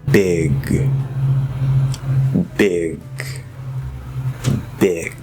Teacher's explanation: But you can also do where you go into, say, the g here, big, but then when you release a little bit, you stop that voice and it comes out as just a tiny little weak K. This can happen.